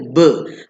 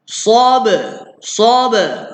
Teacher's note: Special ba adalah melantun bunyi dia.